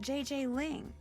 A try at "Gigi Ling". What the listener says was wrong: you pronounce g like J and J like G she may very well be JJ in America but in France she is Gigi